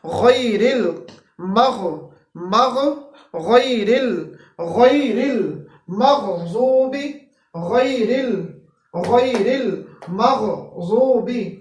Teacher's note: غیر غین ہے جو کہ ادنا حلق سے ادا ہوتا ہے